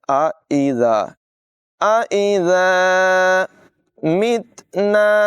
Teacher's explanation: ज़ाल की आवाज़ बग़ैर सीटी के अदा होगी